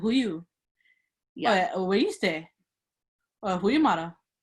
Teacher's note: the correct Hawaiian language intonation when asking questions, as opposed to Who are you? That goes up